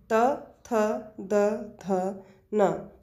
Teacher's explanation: दांत का अगला भाग जिह्वा से टच होता है, स्पर्श करेगा। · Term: दंत व्यंजन